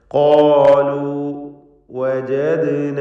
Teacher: ഖാഫും ദീർഘാക്ഷരമായ അലിഫും തഫ്ഖീം ചെയ്യുക, തടിപ്പിച്ച് സ്വരഭാരത്തോടെ ഉച്ചരിക്കുക.